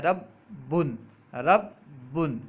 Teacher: پہلے با کو ساکن پڑھ رہے ہیں پھر متحرک پڑھ رہے ہیں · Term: تشدید